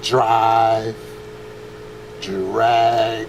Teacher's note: when you add an R to a d it becomes a j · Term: the J sound